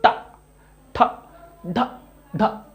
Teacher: इसमें जीभ ऊपर से टच तो करती है पर घूम जाती है, मतलब टा, ठा, ढा, ढा, ऐसे मुड़ के जीभ आ रही है, पिछले भाग को छू के आ रही है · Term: मूर्धन्य